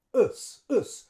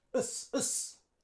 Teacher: here, we wouldn't use the U sound. We would use schwa.